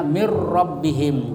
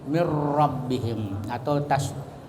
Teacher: tidak mendengung tapi dimasukkan contohnya mirbihim jadi itu nun mati Eh terbaca ra karena dimasukkan ke ra Jadi seolah-olah dua ra ya mirbihim atau tasbihim Jadi itu dibaca eh ra tasdid bertasdid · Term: idgham bila gunnah